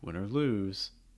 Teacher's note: A common intonation pattern for this at the start of sentences would have a fall on win and then a slight rise on lose.